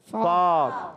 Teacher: یہ ادا ہوتا ہے اوپر والے دانتوں کے کنارے، جب نیچے والے ہونٹ کے تر حصے سے لگتے ہیں تو ادا ہوتا ہے فا۔ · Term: فا کا مخرج